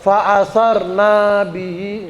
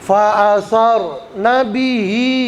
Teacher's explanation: na-nya nggak boleh dibaca panjang, nggak boleh fa'asar nabihi, nggak boleh ya.